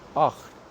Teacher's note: Right from the epiglottis.